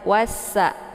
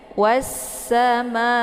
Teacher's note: bunyi Sin ya ditekan kemudian dimasukkan suaranya ke dalam saat ini sifatnya safir Ya jadi anginnya itu jelas ya wasa dan dibaca tipis